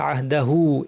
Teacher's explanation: পড়ি তাহলে শব্দটা হচ্ছে আহদাহু এই হা পেশ এটা হচ্ছে সর্বনাম এই সর্বনামের হাটাকে সাথে এখানে পেশ আছে ওয়াও দিয়ে টানতে হবে আবার পরে হামজা থাকায় এই টানটা আবার দুই আলিফ হয়ে যাবে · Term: সিলা কুবরা